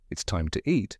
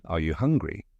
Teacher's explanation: It's the rising inflection we use at the end of a question. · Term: interrogative intonation